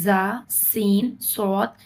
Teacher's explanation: इसको अदा करते वक्त सीटी की तरह आवाज निकलनी चाहिए। और इसलिए इनको हरूफ सफीरिया या सीटी वाले हरूफ भी कहा जाता है।